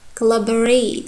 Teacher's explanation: Here you can see two sounds became schwa. O sounds, collaborate. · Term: qualitative reduction